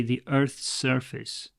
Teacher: there's two S's, but you can say this as one S. You don't have to say the Earth's surface with a gap in the middle.